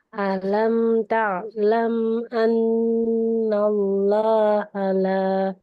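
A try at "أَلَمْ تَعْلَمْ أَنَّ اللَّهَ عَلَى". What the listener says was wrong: Jangan lahnya jangan panjang. Lahnya jangan panjang. Alam ta'lam annallaha lah.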